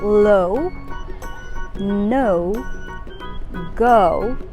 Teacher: the long o sound is the normal sound for o where you sound is with rounded lips